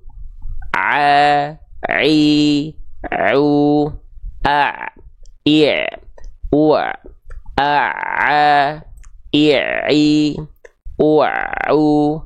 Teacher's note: huruf Ain dia dilafalkan dari bagian katub epiglotis